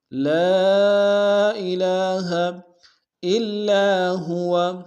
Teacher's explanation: الہ میں لام کے اوپر کھڑا زبر ہے ایک اسم دار میں کھینچیں گے۔